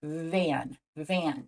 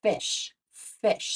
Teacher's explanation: you say van so it's interesting with just this small movement bringing our bottom lip up to meet our top teeth we can create two different sounds simply by turning our voice on or off